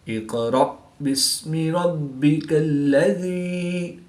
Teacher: با حروف قلقلہ میں سے ہے اور یہ مشدد ہے تو یہاں پر قلقلہ کبریٰ کر کے پڑھیں گے۔ قاف کی زبر کو وقف کی حالت میں ساکن کریں گے تو یہاں پر وقف کی حالت میں قلقلہ صغریٰ کر کے پڑھیں گے۔